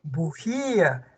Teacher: La sílaba tónica está en la ji y está tildada.